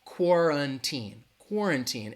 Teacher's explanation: it has three syllables and that the stress is going to be on that first syllable that qu a sounds like cor cor quarantine it has that